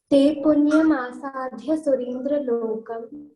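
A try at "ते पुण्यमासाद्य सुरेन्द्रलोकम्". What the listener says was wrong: Here asadya is alpha prana. Don't stress. Te punyamasadya surendra lokam.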